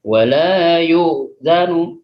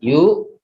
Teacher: mengucapkan huruf hamzah, yaitu makhraj di tenggorokan bagian dalam